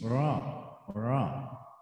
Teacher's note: Punggung ujung lidah bergetar dengan gusi.